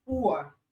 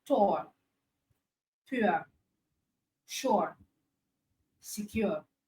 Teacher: a combination of short oo sound and the schwa sound. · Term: diphthong